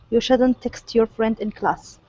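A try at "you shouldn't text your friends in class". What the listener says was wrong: make sure to pronounce that a that s one more time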